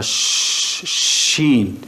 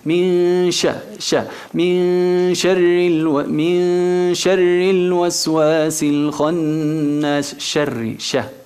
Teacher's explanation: مرققة الشين. Y tiene una característica que se llama tefeshi, expansión, digamos, que el sonido se expande a la hora de pronunciarla, shin, y es atenuada, moracaca.